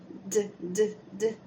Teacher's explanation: agora se eu falasse o d o d tem vibração